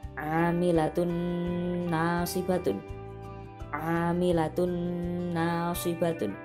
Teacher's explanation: tanwin bertemu huruf nun, dibaca idgham bi gunnah, memasukkan dan dengung.